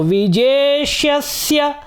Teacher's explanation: पहले मूर्धन्य श है जिसको कहते हैं आप षटकोण वाला श, फिर सेब वाला सा है